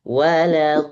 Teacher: huruf tebal di sini hanya satu huruf, huruf d saja yang lain tipis. La tipis, wa tipis, kemudian li. Li itu juga tipis.